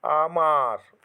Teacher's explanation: আমার শব্দে প্রথমে যে আটি আছে তার থেকে বেশি ম এর সঙ্গে যে আটি আছে তার উচ্চারণ দীর্ঘ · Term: দৈর্ঘ্য